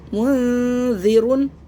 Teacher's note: نون ساکن کے بعد زال آ رہا ہے باقی بچے 15 حروفوں میں سے، تو یہاں پہ درمیان میں زبان رکھنی ہے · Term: درمیانی اخفا